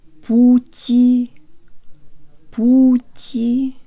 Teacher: the first syllable contains an ooh so be sure to stick your lips out way further than you would in English